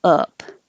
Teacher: the uh and that is in the middle of your mouth your tongue is low in the middle and kind of pulled back